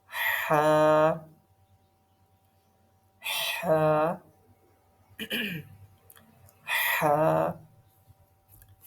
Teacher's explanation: تو ہا جو ہے وہ ہمارے مڈل آف تھروٹ سے نکلتا ہے. یعنی کہ یہاں پہ کیا ہے کہ سانس بھی اس کے اندر آتی ہے، اور جیسے اگر ہم ٹھنڈا پانی پیئے نا تو ہمارے اس طرح کی آواز نکلتی ہے بعض اوقات.